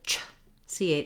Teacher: my tongue starts where there's a t and then it drops down into the position for making this sound in one quick movement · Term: ch sound